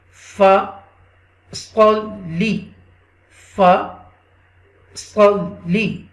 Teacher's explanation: This sad, this heavy letter will connect with the lam mushadda, okay, with the extra stress.